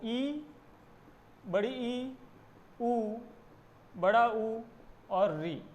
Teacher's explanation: संवृत स्वर, जिसमें मुख बिल्कुल कम खुलता है